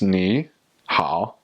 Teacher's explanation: in Mandarin, they say ni hao, and so those are the third tones